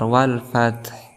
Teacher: di sini ada ta yang disukunkan. Dia disifati dengan hams, maka ada nafas yang keluar